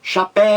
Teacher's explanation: você grita chapéu você demora mais na última sílaba é chapéu então chapéu é uma palavra oxítona porque a sílaba mais forte é a última · é a palavra a sílaba mais forte então você grita chapéu você demora mais na última sílaba é chapéu então chapéu é uma palavra oxítona porque a sílaba